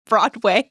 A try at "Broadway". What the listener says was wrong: You said broad again, yeah.